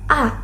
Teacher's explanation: dibentuk dengan lidah yang berada di posisi rendah dan tengah serta bibir yang rileks